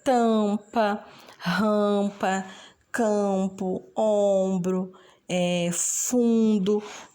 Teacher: A gente fala que são as vogais nasais. Se vocês perceberem, parece que o som sai pelo nariz.